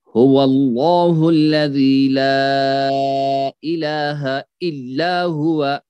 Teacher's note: لام جلالہ اس کو پڑھا جائے گا موٹا کر کے، یہاں پہ بھی ظاہر ہوگا اچھی طرح سے ای پوری طرح سے.